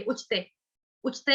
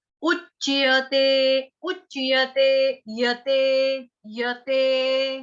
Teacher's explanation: य का साउंड आराम से आना चाहिए, इसको उच्चते नहीं बोलेंगे, उच्चते, उच्चते नहीं, उच्यते, उच्यते, यते, यते।